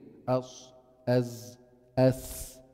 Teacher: من طرف اللسان مع إبقاء حيز ضيق بين السطح اللسان السيرفس والحنك الأعلى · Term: أحرف صفير